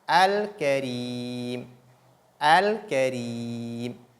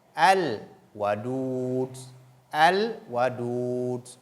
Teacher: Constatons donc qu'avec ces lettres, la lettre Lam, l'article Lam, est lu distinctement.